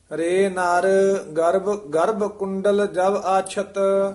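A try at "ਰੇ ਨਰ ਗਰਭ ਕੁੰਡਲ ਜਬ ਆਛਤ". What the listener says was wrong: रे नर इथे ठमक है, गर्भ कुंडल जब आछत। गर्भ भारा ही उच्चारण करना पब्बे नाल।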